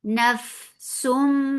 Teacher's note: This is idgham with gunna, so keep the sound in your nose for a longer time.